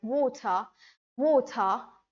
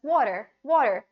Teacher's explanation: American guy will pronounce it as water, water, pretty fast, and they shorten the vowel